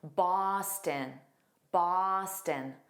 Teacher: The issue I hear is that last sound. It needs to be unstressed, so it sounds like a tin